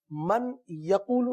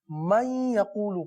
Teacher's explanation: نون ساکن تو یہاں پر موجود ہے اور آگے جو حرف ہے وہ ہے یا، صحیح ہے؟ تو اب اس نون کا یا میں ادغام ہوگا۔ ہم من یقولو نہیں پڑھیں گے بلکہ من یقولو پڑھیں گے، صحیح ہے؟